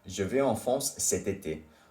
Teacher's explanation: T becomes pronounced because of été starts with a vowel. So they do la liaison.